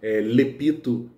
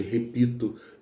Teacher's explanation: cebolinha trocando o r pelo l